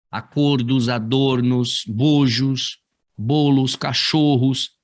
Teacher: essas palavras vão manter aí o timbre fechado